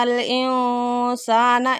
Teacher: انسان نون ساکن کے بعد سین آ گیا، اخفاء ہو رہا ہے